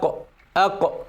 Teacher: القاف من أقصى اللسان